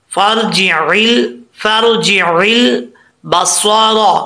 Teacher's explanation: آگے لام ساکن ہے، لام میں کلکلا نہیں آنا چاہیے